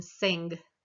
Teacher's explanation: the velar we're back at the velum again when we make that sound as in sing